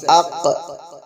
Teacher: قاف زبان کی جڑ کی ابتدا اور اس کے مقابل اوپر کے تالو سے ادا ہوتے ہیں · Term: بڑا قاف